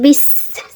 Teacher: সিন চিপাতে সফিরা, শীষ দেয় সফিরা